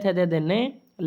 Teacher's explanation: त थ न ल तथा स का उच्चारण स्थान दंत होता है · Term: दंत वर्ण